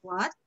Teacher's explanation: So, the second tone up, rising, as you can see.